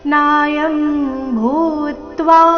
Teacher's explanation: ಭೂ ಮಹಾಪ್ರಾಣ ದೀರ್ಘ ಅದರ ಮೇಲೆ ಆಘಾತ